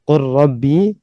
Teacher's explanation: Kemudian qur rabbi, maka lamnya juga diidghamkan ke ro karena mutaqarib, karena berdekatan makhrajnya